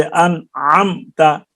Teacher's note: میم کا اظہار ہوگا، یعنی اپنے مخرج سے بلا غنہ کے ظاہر کی جائے گی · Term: اظہار شفوی